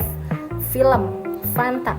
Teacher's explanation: bunyi yang dihasilkan dengan cara arus udara dihambat sedemikian rupa sehingga udara tetap dapat keluar. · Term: bunyi geser